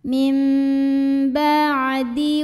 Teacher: Cara membaca nun sukunnya adalah diganti dulu jadi bunyi mim sukun, jadi mim, dan dengungkan, tahan. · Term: iklab